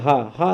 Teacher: हा का उच्चारण स्थान कंठ है